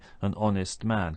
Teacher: honest begins with H, a consonant, but we don't pronounce it. We start with the vowel sound O, so we say an honest man.